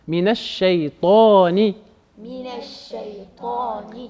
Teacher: Le ta, il est emphatisé. Donc ne dites pas minash shaytani, c'est pas très joli.